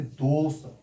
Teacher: मूर्धन्य वर्ण है किंतु उच्चारण बड़े सा की भांति होता है